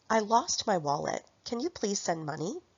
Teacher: the content words like lost, wallet, send, and money are stressed · the function words like I, my, and you are not stressed in this sentence because they are pronouns